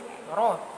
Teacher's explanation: dekat makhraj nun dan masuk pada punggung lidah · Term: huruf ro